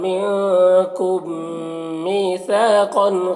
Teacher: मीम साकिन के बाद मीम है तो इदगाम शफ़वी होगा, इसे गुन्ना के साथ पढ़ना है